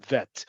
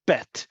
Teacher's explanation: I hold vet for a longer period. I can't do that with bet. I can make it implosive, bet, but I can't hold it as long as the.